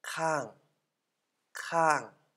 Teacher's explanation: Hoher Anfangskonsonant, zweites Tonzeichen, lebende Silbe, deshalb fallender Ton.